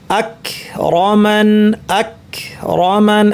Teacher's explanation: কফ থেকে একটু সামনে হচ্ছে কাফ